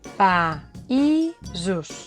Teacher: La A i la I estan en síl·labes diferents.